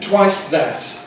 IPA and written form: ˈtwaɪs ˈðæt (twice that)